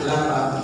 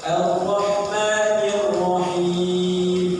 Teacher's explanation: takrir bergetar ya Jadi kalau enggak ada getarnya maka bisa jadi l